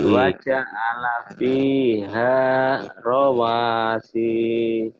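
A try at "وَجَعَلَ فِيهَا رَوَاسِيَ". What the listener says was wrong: Bagus.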